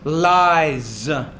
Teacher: The S there is going to be pronounced as a Z. It comes after a vowel sound.